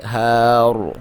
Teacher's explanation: من تحتها الانہار، ٹھیک ہے، ہار. یہاں پہ جب آپ را کے اوپر وقف کریں گے تو اگر اس پہ پیش یا زبر ہوگی تو وہاں پہ آپ موٹا کر کے را کو پڑھیں گے، ہارڈ نہیں کریں گے، ہار، ٹھیک ہے.